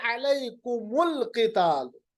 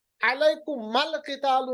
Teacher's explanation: देखिए अलैकुमुल क़िताल, अलैकुमल क़ितालु नहीं पढ़ सकते, अलैकुमिल क़ितालु नहीं पढ़ सकते, यानी मीम के ऊपर हमेशा पेश लाना पड़ेगा दूसरे साकिन से साथ मिलाने को। यानी हमारी चॉइस नहीं है कि मीम साकिन था उसके बाद साकिन था, मीम पे हम जबर या जेर भी लाते, नहीं, ये चॉइस नहीं है, आपको मीम के ऊपर पेश ही लाना पड़ेगा।